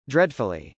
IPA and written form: drˈɛdfəli (dreadfully)